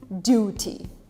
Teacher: In British, it stays as a T, duty. By the way, the platform that you're watching right now, I used to call it YouTube, just because I learned the British version of it, just because I heard about YouTube when I first came to the UK.